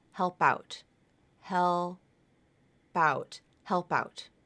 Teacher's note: That final P is going to split away from the L and move over to the next word.